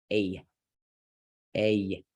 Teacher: it's kind of like an ah in the beginning and then a yeah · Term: complex